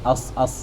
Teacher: Ada bain thanaya di antara dua gigi. Di antara dua gigi, ruang sempit tu dia tembus, dia lalu angin suara menyebabkan bunyi tu langsing, bunyi desir dah.